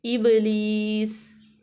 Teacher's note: با جو ہے حروف قلقلہ ہے، تو اس کو ہم ہلا کے پڑھیں گے